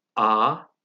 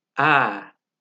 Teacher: Sadece A harfini ağzın arka tarafından Ä harfini ise ön tarafından söyleyeceğiz.